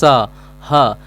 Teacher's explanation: उस वर्ण के उच्चारण में मुंह से गर्म हवा निकलता है उसको हम कहते हैं उष्म व्यंजन